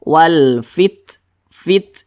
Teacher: jangan dibaca walpit nah jangan seperti itu tapi ada nafas yang kita alirkan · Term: sifat Hames